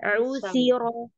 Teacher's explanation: Huruf sa-nya dijaga lagi, ujung lidah ketemu gigi seri atasnya.